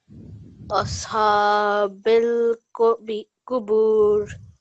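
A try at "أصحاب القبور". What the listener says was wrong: Try to make the ha a bit more from your throat. Ashabil Qubur.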